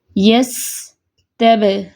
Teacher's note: دیکھیں سین میں تھوڑی سی آواز چل رہی ہے، سانس جاری ہے کیونکہ یس تب، با پہ فوراً سے بند ہو گئی آواز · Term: شدہ